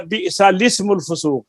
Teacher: دونوں حمزے گر جائیں گے، لام کے پہلا بھی اور لام کے بعد والا جو اسم کا ہے، تو پھر لام کو زیر دیں گے، وہ اجتماع ساکنان علی غیر حدی کی وجہ سے.